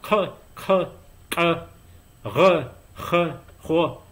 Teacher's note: quite a lot of uvular sounds which are pronounced in the back of your throat